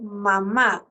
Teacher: el sonido de la m es sonoro porque las cuerdas vocales entran en contacto para producir la m